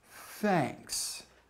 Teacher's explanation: the unvoiced th sound is formed just by merely blowing air and your vocal cords do not vibrate thanks with both see if you can point out the voice